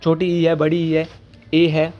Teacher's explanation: अग्र होते हैं जहां पे जीभ का आगे वाला हिस्सा काम करता है।